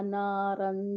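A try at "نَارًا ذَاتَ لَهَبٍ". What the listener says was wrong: रा को मोटा करें, पहले रा को पहले मोटा करें। नारन नहीं कहेंगे आप, जहाँ पे इजहार नहीं है, जहाँ पे क्या है, इदगाम है, दाल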